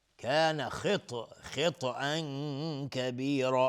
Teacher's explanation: خا و تا هر دو از حروف استعلا هستن غلیظ تلفظ میشن و تا اینجا ساکن قلقله هم میخواد